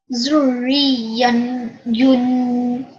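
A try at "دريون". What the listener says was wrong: Okay, one more time because this is a dal. Okay, the ya, although the fatha, the damatain, the tanween here does go into a sukoon, the tashdid here still has to be manifested.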